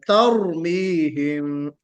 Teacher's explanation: रा में तफखीम है, रा मोटा पढ़ा जाएगा, और उसमें लेकिन इतना मोटा मत कीजिए कि उसमें सिफत तकरीर खत्म हो जाए, यहाँ पे भी हमको रिपीटेशन का ख्याल करना है।